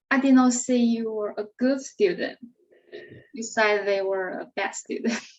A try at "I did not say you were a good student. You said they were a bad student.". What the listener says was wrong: That's right. That's right.